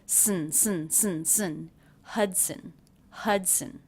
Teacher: And when the schwa is followed by the N sound, you don't need to worry about making a separate schwa sound. It gets absorbed by the N.